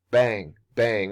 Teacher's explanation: bang bang will always be two stresses